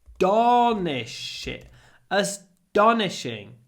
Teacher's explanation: It's almost like a D sound because it comes after S. · with no aspiration, because after S, T is not aspirated